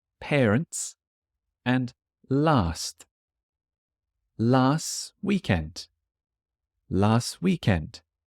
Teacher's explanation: the T on parents and the T on last disappears